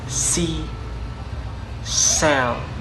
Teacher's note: the voicing is voiceless, the place is alveolar, for the manner is fricative